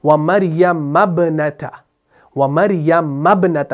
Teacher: میم کو با سے ملاتے ہیں